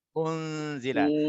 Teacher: Maknanya dia kena dengung 2 harakat. Nun mati bertemu dengan zai. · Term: ikhfa hakiki